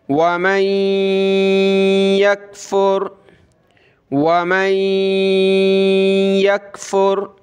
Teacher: نون ساکن کے بعد وہ ورڈ ہے جس پر تشدید ہے تو یہاں ہم نے ناک میں آواز پیدا کرنی ہے